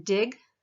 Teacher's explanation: you're putting your tongue up against your alveolar ridge again kind of feel where that is back behind your teeth